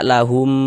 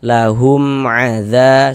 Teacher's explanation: Baca jelas, pendek saja, enggak berdengung, baca pendek saja. Lahum adza, jangan dibaca lahum dipanjangkan begitu, jangan, pendek saja. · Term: izhar syafawi